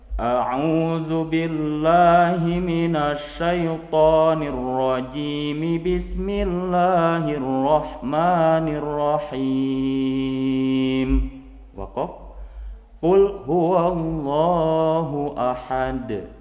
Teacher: ketika ta'ud dan basmalah kita sambungkan, kita satukan, tapi ketika dari basmalah ke surah kita kasih jeda atau wakafkan